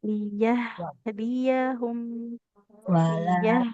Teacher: huruf H-nya alirkan dulu suaranya dengan sempurna.